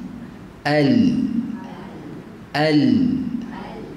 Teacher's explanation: suara keluar melalui tepi lidah tu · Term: inhiraf